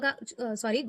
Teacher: घ का उच्चारण स्थान हो जाएगा हमारा कंठ